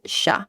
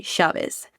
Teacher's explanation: if you were to be looking at like Mexican Spanish, it's more of a ya sound, but here it's sha, almost like the sh sound in English